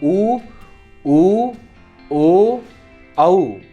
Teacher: आप खुद बोलकर भी देखेंगे तो आपको समझ में आएगा। ऊ, ओ, औ, इनको बोलते समय होंठों की आकृति गोल हो रही है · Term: वृत्तमुखी